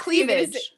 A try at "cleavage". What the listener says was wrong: Not cleavage. You add like an unnecessary DG in there.